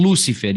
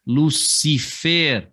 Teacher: Não é um Lúcifer, e sim Lucifer, a tônica sendo a última